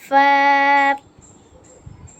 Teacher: দুই দাঁতের আগা ঠোঁটের সাথে লাগবে ফা